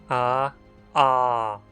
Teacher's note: Nessa vogal, a língua fica bem baixa na boca, longe do palato, e a mandíbula se abre. Além disso, como fica claro, é pronunciada na parte de trás da boca como U.